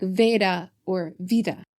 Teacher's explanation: And here too we see the blurring of B and V, with the modern Greek pronunciation of beta being softened by transitioning that hard B into a V, so it sounds more like Veda or Vida. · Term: betacism